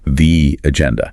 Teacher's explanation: Here, notice the agenda, because agenda starts with a vowel. The E sound at the end of the might get slightly longer